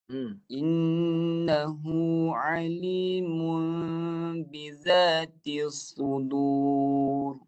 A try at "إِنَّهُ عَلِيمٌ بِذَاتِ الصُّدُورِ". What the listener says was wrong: Ni pun sama kan? Dia satu bunyi. Alimun. Itu satu bunyi. Jadikan dua bunyi. Macam tu. Mu tu jaga jangan masuk hidung.